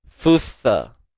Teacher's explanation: Satu huruf sa keluar hujung lidah, kemudian huruf sin tak perlu keluar hujung lidah. Huruf sin ni hujung lidah di belakang gigi sebelah bawah.